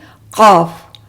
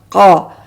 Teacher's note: تو جب ہم اس نرم تالو کے ساتھ ہماری زبان کا بالکل بیک کا حصہ جو ہے، متصل حصہ جو بالکل اندر جڑا ہوا جڑ ہے جو زبان کی، جب اس کو لگاتے ہیں تو یہ حرف موٹا ادا ہوتا ہے